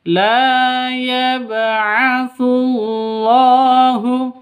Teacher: Lafdul jalalah ada di tengah berarti panjang hanya dua ketukan. Dan juga ada alif lam syamsiyahnya.